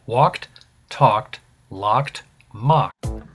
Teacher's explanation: when a verb ends with a k, you use the t sound to pronounce the ending